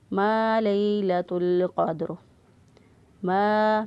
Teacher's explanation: الف سے پہلے والے حرف پر زبر ہو تو اس کو الف مدہ کہتے ہیں، اس کو ایک الف کے برابر یہاں پر لمبا کیا